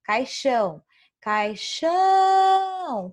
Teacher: caixão é a última sílaba é oxítona